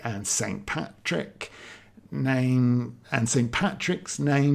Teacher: when you start a line of poetry with and, there is this tendency as you read it to stress that syllable. And that should be in a limerick an unstressed syllable to start the line.